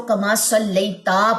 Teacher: تا کی زبر لمبی کر دیتے ہیں